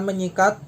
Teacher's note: Peluluhan fonem terjadi apabila prefiks me diimbuhkan pada bentuk dasar yang dimulai dengan konsonan bersuara S, K, P, dan T. Dalam hal ini konsonan S diluluhkan menjadi nasal ny, NY.